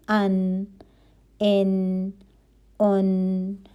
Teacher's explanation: یہ حرف آسانی سے ادا ہوگا، جبڑوں پر دباؤ نہیں آئے گا، طرف اللسان اوپر لگے گی اور باقی زبان جو ہے وہ نیچے رہے گی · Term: حرف نون